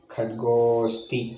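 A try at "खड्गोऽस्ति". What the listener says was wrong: Khadgosti. Khadgo, you don't have to make too long. Khadgosti. I is neither pronounced, we told it. Now, as if I indicating the khadgosti, you don't have to say. Because you are trying to indicate we already told neither pronounced nor written.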